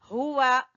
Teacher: हा अक्सा हलक से यानी गले के आखिरी हिस्से से